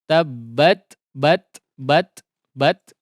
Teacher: Huruf ta yang disukunkan di situ ada hamas tabbat bat ya, ada percikan udara ya, atau hembusan udara ya. Bat jangan berlebihan, sekali lagi jangan berlebihan atau malah mati juga tidak ya.